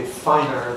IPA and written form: ˈfaɪnɚ (finer)